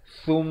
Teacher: mim sabdu dengungkan, wajibul gunnah 2 harakat